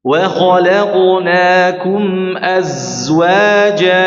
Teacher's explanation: Dan huruf za ini menggetarkan di area gigi ya. Kalau kita membaca dengan disukunkan maka menggetarkan di area gigi-gigi. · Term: desisan dari huruf za